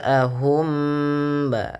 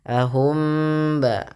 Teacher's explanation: Kemudian mim mati bertemu ba tahan ya. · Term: ikhfa syafawinya